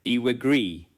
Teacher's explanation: A light y sound may appear.